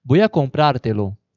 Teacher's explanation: sílaba tônica pra, que é a última, ela passa a ser a antepenúltima. Então, ela passa a ser uma palavra proparoxítona, comprártelo.